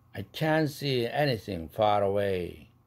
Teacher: can't see가 아니라 트 날아가는 거 알죠?